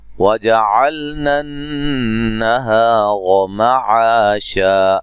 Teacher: नून मुशद्दद पे गुन्ना ज़रूरी है